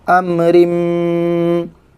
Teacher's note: یہاں پر گنہ کے ساتھ ادغام کریں گے